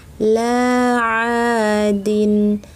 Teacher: Laadin, mad thobii, mad thobii, two counts long. La aadin, jangan ucapkan la a aa dengan sengau, jangan sampai masuk ke hidung